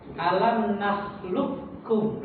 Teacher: Huruf qaf-nya itu hilang. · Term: idgham kamil